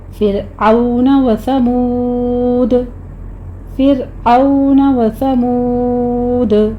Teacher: فرعون میں یہاں پہ را کو باریک رکھنا ہے، عین کو آپ نے وسط حلق سے ادا کرنا ہے ، او میں واو لین ہے، ثمود میں واو مدہ ہے، · ثمود میں واو مدہ ہے، آخر پہ دال پہ قلقلہ کر لیں گے